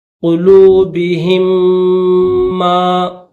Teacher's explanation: کلا بل ران علی قلوبہم، قلوبہم، کلا بل ران علی قلوبہم، تو قلوبہم میں جو میم ہے وہ میم ساکن ہے، اس کے اوپر جزم ہے اور اس میم کے اوپر تشدید ہے، تو اس میم ساکن کو میم تشدید والا جو یہ میم ہے میم مشدد اس کے ساتھ ملا کر دونوں میم کو ایک کر دیں گے